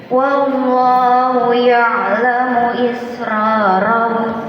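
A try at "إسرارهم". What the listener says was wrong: Tebalkan lagi. Ro. Satu getar. Ro. Israrahum. Ini terlalu banyak getarannya.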